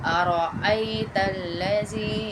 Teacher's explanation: را کو پتلا نہیں پڑھیں گے، موٹا کریں گے تھوڑا سا